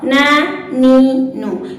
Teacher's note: huruf nun keluar melalui ujung lidah mengenai gusi gigi seri atas